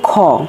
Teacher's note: খ এটা হচ্ছে ক যোগ হ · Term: মহাপ্রাণ বর্ণ